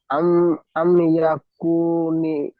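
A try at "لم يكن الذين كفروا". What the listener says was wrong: আম না, লাম, লাম আছে, ওটা লাম।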